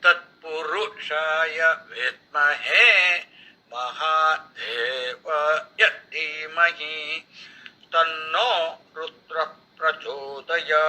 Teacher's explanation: In this one, when you look at from the point of view of the time duration, Tat Pu, then Ma and Rudra, all these have only 1 unit of time duration. There is no elongation.